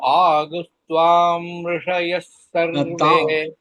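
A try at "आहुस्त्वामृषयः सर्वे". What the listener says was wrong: துவாம் இம்மு வருது, இம்மு வர வேண்டாம். ஆஹுஸ்துவா மிருஷ துவா மிரு துவாம் வேண்டாம், இம்மு வர வேண்டாம்.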